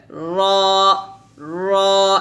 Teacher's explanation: জিহ্বার আগার পিঠ অথবা জিহ্বার আগার উল্টা পিঠ বলতে হবে এখানে জিহ্বার আগার উল্টা পিঠ তার বরাবর উপরের তালুর সঙ্গে লাগিয়ে র টা মোটা করে উচ্চারণ করতে হবে যেমন এখানে রা হবে হবে না বলতে হবে র র এভাবে